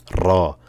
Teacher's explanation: কারণ র জিব্বার আগাটা কেঁপে উঠবে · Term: তাকরাটা